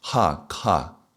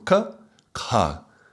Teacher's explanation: K with an H is an aspired sound, so aspirated